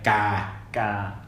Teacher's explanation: So it's not a G. It's non-aspirated K.